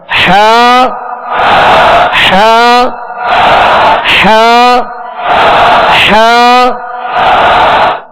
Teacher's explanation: حا کا جو مخرج ہے وہ حلق کے درمیان والے حصے سے حا ادا ہوتی ہے · اب اس میں تکلف سے اس کو ادا نہیں کرنا، جیسے حا تو ڈبل آوازیں ہو جائیں گی، ایک ہو جائے گی پھر ہوگا حا تو 2 آوازیں نکلیں گی، بلکہ اس کو وسط حلق سے بالکل ایزی ادا کرنا ہے، تکلف سے ادا نہیں کرنا